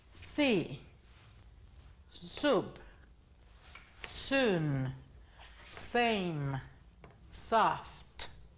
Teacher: la S, las cuerdas vocales no vibran